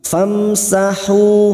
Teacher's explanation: kita kita Uraikan dari kalimatam mim sukun bertemu ta Idhar syafawi mim sukun dibaca jelas tanpa mendengung